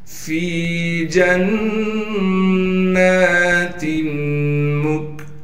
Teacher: तशदीद होने की वजह से नून में गुन्ना भी किया जाएगा और फिर तशदीद के ऊपर कड़ा ज़बर होने की वजह से नून को एक अलिफ के मिकदार खींचेंगे भी।